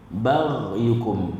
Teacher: seretkan huruf ghin tersebut, dan kita kena bezakan, jangan kita tersilap baca ba'yukum